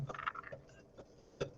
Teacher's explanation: when I say p, then you hear consonant as well as you hear a vowel sound, but that is not the actual production of consonant sound